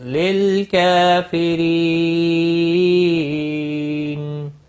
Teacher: ری یا مدہ ہے، ایک الف کے برابر کھینچ کر پڑھیں گے، اور را کو باریک پڑھیں گے زیر کی وجہ سے۔ اور وقف کی صورت میں نون ساکن پڑھیں گے، وقف بالاسکان ہوگا، 3 سے 5 الف کے برابر کھینچ کر وقف کریں گے۔